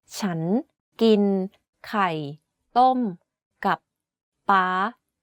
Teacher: The word ฉัน is pronounced first at a lower pitch then ascends. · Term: rising tone